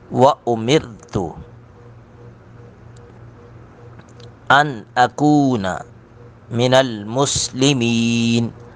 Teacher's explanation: ان یہاں پہ بھی اظہار کریں گے، ناک میں آواز نہیں جائے گی